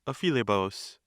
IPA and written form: fɪˈliːbəs (Philebus)